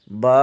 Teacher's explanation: با بند ہونٹوں کے گیلے حصے سے ادا ہوتا ہے